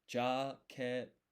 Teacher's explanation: you have a silence for about like one syllable, and then you place extra emphasis on the consonant that comes after. So this to, the t, to is, you put some more stress on it. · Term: syllable pause